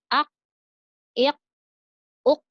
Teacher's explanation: ketika mengucapkan huruf qa agak lebih dinaikkan lagi, lidahnya agak lebih dirasakan lagi, lidah paling belakang.